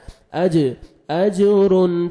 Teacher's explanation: جیم حروف قلقلہ میں سے ڈبل ساؤنڈ آئے گا